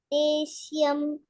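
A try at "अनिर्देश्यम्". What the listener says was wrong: You are telling is, no? It is not is. Ish. SH. Deshyam.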